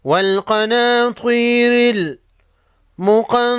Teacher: قاف اور طا کو موٹا پڑھیں گے